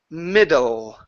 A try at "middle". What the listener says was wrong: Almost. Your tongue is still in the back of your mouth. You're saying middle. It's back here. Okay, push your tongue forward.